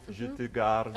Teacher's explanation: Watch out that you don't aspirate the T in je te